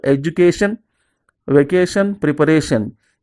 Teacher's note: If the words end with these suffixes, un, al, ikus, they take stress on the second last syllable